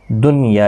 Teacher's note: دنیا، یہاں پر نون ساکن کے بعد یا ایک ہی کلمے کے اندر آیا ہے، تو یہاں پر اظہار مطلق ہوگا، یعنی نون کو ظاہر کر کے پڑھیں گے